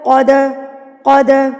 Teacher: دال پہ قلقلہ کریں گے، اس کو ہلا کے پڑھیں گے